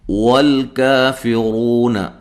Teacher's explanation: ہونٹوں کو گول کرنا ہے، لام کو ہلا کے نہیں پڑھنا، کاف کو باریک پڑھنا ہے اور مد اصلی ہے ، فی غو رو و مدہ ہے، اور را کو موٹا